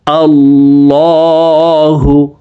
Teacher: আল্লাহু, লা বলা যাবে না, মোটা করে পড়তে হবে।